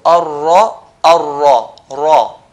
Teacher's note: So when do we pronounce it with heaviness? We pronounce it with heaviness if ra has a fatha.